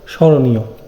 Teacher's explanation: যেমন স্মরণীয়, তার মানে শব্দের শুরুতে যদি মফলা থাকে তাহলে কি হবে, ম এর উচ্চারণ হবে না, কিন্তু একটু নাসিক্য হবে, স্মরণীয়। খনম্বর দেওয়া হচ্ছে, শব্দের শেষে বা মধ্যে থাকলে মফলার উচ্চারণ হয় না।